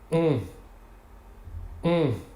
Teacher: Ce phonème est un nasal, c'est-à-dire que si vous positionnez votre doigt sous le nez, vous devez sentir passer de l'air.